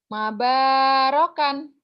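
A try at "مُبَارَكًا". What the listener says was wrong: Giliran patah dikasih domah. Dikasih patah. Kok balik-balik kamu nih. Mubah bukan mamba ya. Mubarakan.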